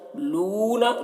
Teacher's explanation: लू को थोड़ा खींच रहे, वाव मद्दा है